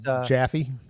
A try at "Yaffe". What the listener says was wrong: It's Yaffe, I believe, right? Yaffe. The J is silent.